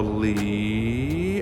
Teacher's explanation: the second tone is rising